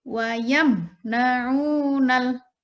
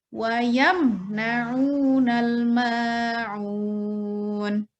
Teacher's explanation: Min sukun bertemu dengan huruf nun. Cara membacanya jelas. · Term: idhar syafawi